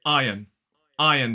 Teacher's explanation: I say it with two syllables stress on the first Iron Iron so that first syllable is I like